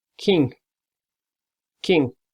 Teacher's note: That's a nasal sound, and you have to use the tongue and hard palate.